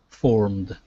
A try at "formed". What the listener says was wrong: Good, good. All right, nice job.